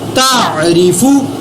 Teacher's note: را کو زیر ہونے کی وجہ سے میں نے باریک پڑھا